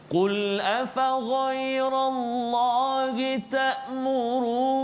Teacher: Bacaan kita tu jadi berat nak masuk kepada huruf kalau kat situ huruf nun, dan juga ada atas nun tu ada sabdu. Kat situ kena dengung pula situ 2 harakat.